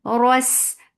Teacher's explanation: Ros, Ra is heavy. Whenever Ra is with fatha, it is heavy.